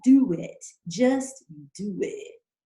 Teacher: that's a W that's connecting the O in do to the I in it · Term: vowel to vowel